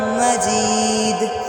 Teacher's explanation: مجید یہ آواز ہلکا قلقلے کی ہوگی